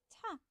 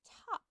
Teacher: ta which is an aspirated sound as in top